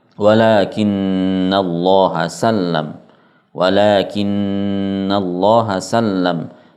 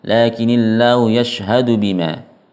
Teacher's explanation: Jadi tidak perlu dinaberkan, tidak perlu diangkat suaranya, ya. Kita baca datar dengan memanjangkan gunnah itu sudah menunjukkan bahwa nunnya bertasydid.